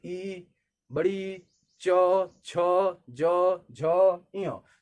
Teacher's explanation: जब हम बोल रहे हैं तो जीभ जो है तालु को टच कर रही है। यानी जब भी आप इसको बोलेंगे च छ ज झ ञ छोटी बड़ी, तो जो जीभ है आपकी है वो तालु को टच करेगी। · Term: तालव्य